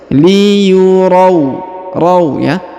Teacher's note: Kemudian huruf ra diayun karena di depannya terdapat ya sukun.